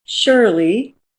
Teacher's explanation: My name, Shirley, if you listen to it, it has two syllables, Shirley, and the first syllable is stressed. I don't say Shirley, I say Shirley.